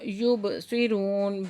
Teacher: وقف کی صورت میں ہم نے نون کو ساکن کر دینا ہے تو یہاں پہ پھر ہو جائے گا مد عارض وقفی · با ساکن ہے، یہاں پہ قلقلہ ہو رہا ہے